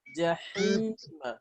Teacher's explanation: ha di tengah tenggorokan ya